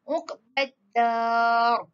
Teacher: Kena sebut ra itu secara tebal dan kita kena matikan huruf ra tersebut walaupun dia ada baris di bawah.